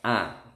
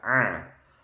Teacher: kalau Alif itu agak lebar a kalau Ain ditekan a